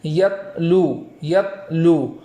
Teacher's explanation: تا کو اس طریقے سے ادا کریں گے کہ وہاں آواز بند ہو جائے اور بغیر آواز لوٹائے آگے والا حرف ادا ہو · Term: جزم